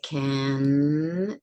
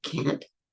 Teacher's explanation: The word can, N, the C is a stop, but the N isn't. And if I say can, there's no stop there at the end. But if I say can't, there is a stop. The issue is that in English, often we will drop the T.